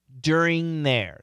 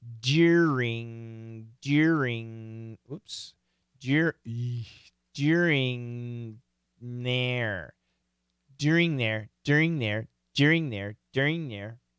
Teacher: This NG is knocking out that TH.